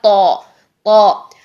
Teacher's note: ठीक है, इसमें इतनी एफर्ट करने की जरूरत भी नहीं होती, ता सीधा सा निकल आता है। लेकिन तौ के लिए हमें जुबान की जड़ ऊपर उठानी होती है, मुंह पूरा भरना होता है। ये देखिए जुबान का दरमियान भी ऊपर तालू से लग रहा है, जुबान की जड़ भी ऊपर को उठी हुई है, भरा हुआ है मुंह, सारा का सारा मुंह भरा हुआ है, भरी हुई एक आवाज निकलेगी जो कि हो गया तौ।